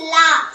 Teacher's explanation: இது மேல் நோக்கி நம்ம போடுறதுனாலையும் மேல் நோக்கு லகரம் சொல்றோம். இன்னொன்னு இது நம்ம நாக்க மேல் நோக்கி லா அப்படின்னு சொல்றதுனால இதையும் மேல் நோக்கு லகரம் சொல்றோம்